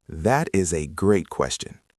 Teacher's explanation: Really emphasize the word great.